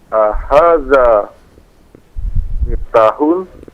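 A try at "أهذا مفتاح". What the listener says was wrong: Iya, miftahun. Taknya dipanjangkan.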